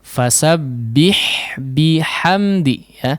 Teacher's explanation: dua-duanya huruf H yang kecil yang keluar dari tengah tenggorokan ya yang dikeluarkan dari tenggorokan bagian tengah